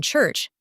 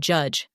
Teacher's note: Now, onto the cheech sound, as in church, and the j sound, as in judge. These are affricates, meaning they combine a stop and a fricative sound.